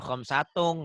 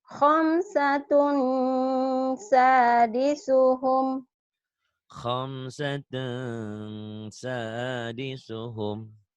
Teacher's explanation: Ikhfanya jangan eng banget. Yang eng banget itu kalau ketemu kaf dan qaf.